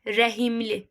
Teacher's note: Bir dənə iz saiti girəcək ortaya. H ilə m-nın ortasına. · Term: Səs artımı